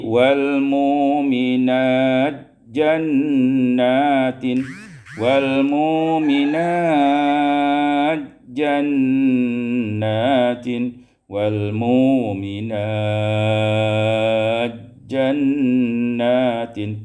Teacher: summa idgham ta fil jim, kemudian diidghamkan ta pada jim, maka menjadi wal mu'minat jannatin, wal mu'minat jannatin, wal mu'minat jannatin, qasar, tawassut dan isba'.